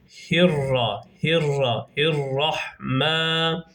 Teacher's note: Allah lafzının H zamiri h'si de arkadaşlar direkt rayya bağlıyoruz